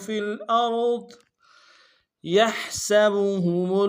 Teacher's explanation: یا کو ہا کے ساتھ ملانا ہے، ہا کو گہرائی سے ادا کریں گے ، سین کی سیٹی باریک ہوگی، با کو نرم سے ادا